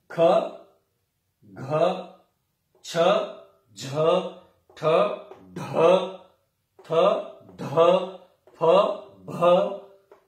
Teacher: और महाप्राण देखिए उसके बाद वर्गाणाम द्वितीय चतुर्थौ शलश्च महाप्राणाः। इनको बोलते समय महाप्राण, हमारी प्राणवायु को महान प्रयत्न करना पड़ता है। देखिए वर्गाणाम द्वितीय चतुर्थौ, वर्गों के द्वितीय और चतुर्थ यानी कि दूसरा और चौथा वर्ण, और शल इनका महाप्राण बाह्य प्रयत्न होता है।